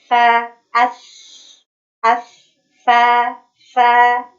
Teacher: sifat yang dimiliki oleh huruf sa itu adalah rokhawah, mengalirnya suara.